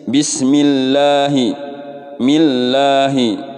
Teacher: ini namanya lafdzul jalalah tarqiq ya dibacanya tipis